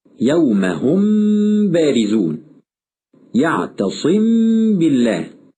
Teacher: ويقع الخطأ في هذا الحكم إما بإطباق الشفتين تماما وعدم انفراجهما فتظهر الميم مختلطة بالباء